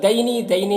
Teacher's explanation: دینی میں یا لین ہے، اسے نرم آواز کے ساتھ جلد پڑھیں گے۔